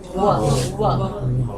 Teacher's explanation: व, इसमें दांत और ओष्ठ दोनों है। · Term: दंतोष्ठम